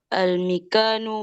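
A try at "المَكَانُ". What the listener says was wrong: Oke, al-makanu bukan al-mikanu. Al-makanu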